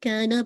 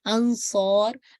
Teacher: اب آپ کو الف بھی ہیوی ہو رہا ہے کیونکہ اس کے ساتھ صاد اٹیچ ہے جو کہ ہیوی لیٹر ہے